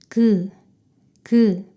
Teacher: 혀뿌리가 입천장을 막았다가 떼며 소리를 냅니다. 이때 혀가 구부러지는 모양이 기역입니다.